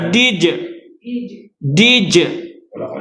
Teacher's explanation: Pertama ingat syiddah, yang kedua sifat dia qalqalah.